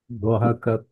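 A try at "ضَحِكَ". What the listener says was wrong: Sebenarnya bukan dhahaka ya, dhahika. Dhahika. Jadi dia punya baris bawah tu ya, masih ada ini. Baris bawah. Dhahika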